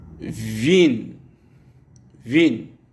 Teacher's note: W se prononce comme en français le V de ville